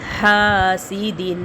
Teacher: ہا کو حلق سے بھی نکالیں گے اور ایک الف کے برابر ہا کو کھینچیں گے کیونکہ الف سے پہلے ہا کے اوپر زبر ہے.